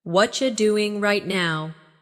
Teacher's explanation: Again, what are you doing right now? In natural speech, what are you becomes what you